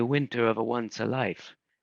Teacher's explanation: with extra vowels and softened consonants, as in Italian, so that winter was a winter, one's was a once, life was a life.